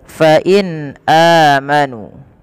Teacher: ini suara nunnya dibaca dengan jelas karena ia ada bacaan yang kita namakan dengan izhar halqi. Maka harus dibaca dengan jelas.